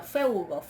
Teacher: Termina en gama, la gama es una velar o gutural